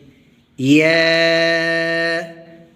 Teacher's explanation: یا کو پڑھتے وقت منہ کے خالی حصے میں آواز آتی ہے